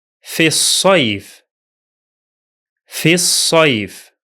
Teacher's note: The hamza of al is silent because it's in connected speech, and the lam is also silent because it is a solar lam. So it will be pronounced as في الصيف.